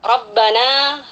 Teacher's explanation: ro tafkhim dibaca tebal karena dia berharakat fathah